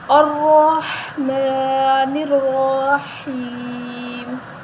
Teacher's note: را کو موٹا پڑھیں گے، ٹھیک ہے، را کے اوپر زبر ہے